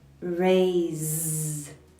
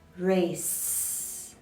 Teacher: in the word raise the final sound is the voiced z sound raise but the word race ends with the voiceless sound